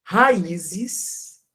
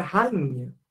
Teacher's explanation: porque esse som do n ele nasalizou o i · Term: som nasal